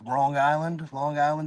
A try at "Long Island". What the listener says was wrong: Did you say Wrong Island? It sounded like you said Wrong Island.